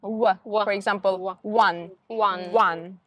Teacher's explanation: different position in our mouth. Like W, you need to round your lips. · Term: W sound